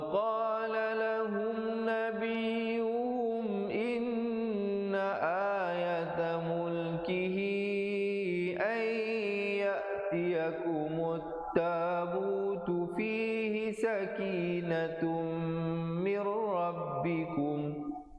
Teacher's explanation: bila nun mati atau tanwin datang ra atau lam, hukumnya masuk tanpa dengung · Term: idgham bila gunnah